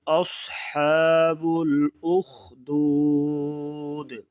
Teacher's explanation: صاد کو موٹا کریں گے، اصحاب الاخدود